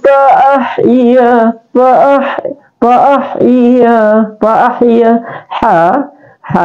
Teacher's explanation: ini harus keluar di tengah tenggerokan atau wastul khalqi